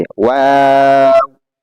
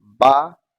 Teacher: वाव जो अदा करते हैं दोनों होठों गोल करके, और बा को दोनों होठों को मिलाकर